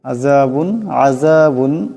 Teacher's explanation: বার পর দুই পেশের তনবিন এরপরে হামজা আসছে এখানে গুন্না হবে না